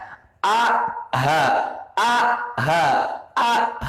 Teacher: ketika kita mengucapkan huruf ha, berarti bergetar pangkal tenggorokan kita. Kalau sudah bergetar, terasa di sini a ha, a ha.